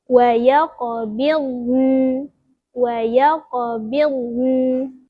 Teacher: Huruf kedua yang mati iaitu huruf nun. Huruf nun ni hujung lidah kita letak dekat gusi. Dan ada sedikit aliran suara, macam ada bunyi dengung sikit lah.